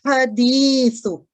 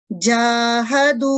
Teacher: جو دوسرے والا ہا حدیث کا ہے اس میں رگڑ ہے، جبکہ پہلے والے جاہدو میں اس میں رگڑ نہیں ہے، یہ نرمی سے آواز نکلتی ہے۔